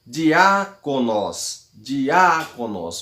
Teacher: O acento está no A. Diáconos. Nós estamos aí na antepenúltima sílaba. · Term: acento agudo